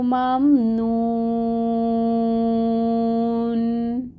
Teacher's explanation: یہ نون کو ساکن کریں گے کیونکہ آگے اب ہم نے وقف کرنا ہے